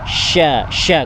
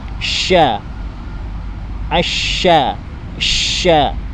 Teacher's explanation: Makhrajul huruf dari huruf sya adalah tengah lidah itu dinaikkan ke langit-langit. Tengah lidah dinaikkan ke langit-langit. Sya, sya, kemudian dikeluarkan anginnya.